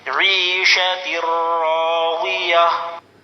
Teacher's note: تا دو زیر تن، عیشتر راضیۃ. آگے آیت گول تا پر وقف کرنا ہو تو ہائے ساکنہ بن جاتی ہے.